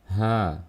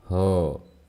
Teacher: sifat yang ketiga ialah istifal, dibaca tipis, tidak boleh dibaca tebal. Ha, jangan dibaca ho.